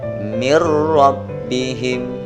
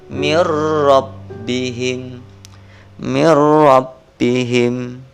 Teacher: Di sini nunnya sukun, tetapi bunyi suara nun matinya dihilangkan, dimasukkan ke dalam huruf ro, huruf idgham bi ghunna berupa ro.